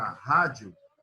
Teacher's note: Então, quando eu tenho aqui o encontro vocálico do I e do A, e eu estou começando com o I, e depois continuando com o A, então eu estou começando de uma semivogal que é fraca, e eu estou caminhando com uma vogal que é grande. Então, eu tenho um caminho crescente. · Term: ditongo crescente